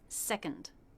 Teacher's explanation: So the N takes over the schwa. You don't need to worry about making it a separate sound. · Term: schwa N sound